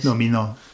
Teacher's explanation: it's got a sound like a d and a th mixed together like a the yeah it's a fusion yeah Domino so it's